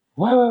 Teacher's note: On dit ouais. Mais avec une aspiration, comme ça.